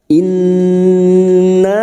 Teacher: Nun yang bertasdid gunnah musaddadah 3 harokat kita dengungkan